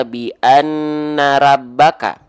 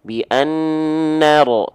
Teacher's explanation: kita baca condong bunyi vokalnya menjadi vokal O? Bi annaro. Kenapa bukan A? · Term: huruf yang tebal